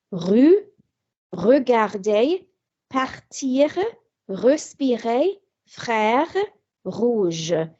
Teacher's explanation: It is pronounced at the back of the throat by vibrating the root of the tongue against the throat. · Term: guttural R